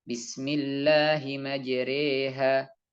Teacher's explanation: imalah yang itu berarti antara fathah dan kasrah